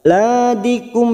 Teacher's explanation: mim sukun bertemu lam dibaca jelas tanpa mendengung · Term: idhar safawi